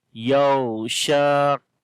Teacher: We cannot make yaghsha, which is the kalkala sound, and that is wrong here. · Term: rakhawa